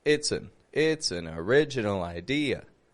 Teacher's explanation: an is more n n very quick and quiet unstressed sounds